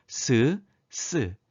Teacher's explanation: 혀끝과 윗잇몸 사이를 좁혀서 그 사이에 공기가 강하게 흘러가며 나는 소리입니다. 스. 이렇게 좁혀진 발음기관 사이를 공기가 마찰시키며 내는 소리라 하여 마찰음이라고 합니다.